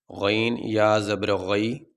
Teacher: یا ساکن سے پہلے زبر آ جائے تو یہ حروف لین کہلاتا ہے اور حروف لین کو لمبا نہیں کیا جاتا۔